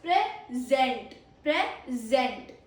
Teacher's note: Stress on second syllable.